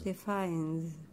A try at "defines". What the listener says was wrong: Good. That sounded nice and natural.